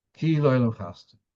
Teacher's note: You should stress the samech of the word chasdoi.